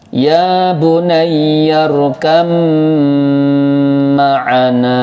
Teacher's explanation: Baknya hilang sama sekali, nggak ada bak lagi. Baknya jadi mem, karena memnya 2 atau mem tasdid, maka harus ada dengungnya. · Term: dibaca lebur dan dengung